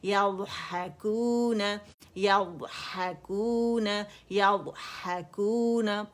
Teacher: ना आवाज़ शिद्दा पैदा करेंगे, ना इसमें सख्त करेंगे, ना कलकला करेंगे, आवाज़ कंटिन्यू रहेगी